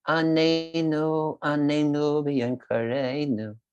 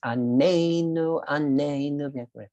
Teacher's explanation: If you put the pronunciation on the first syllable, it means torture us. It's only when you say anenu, a stress on the second syllable, that means answer us.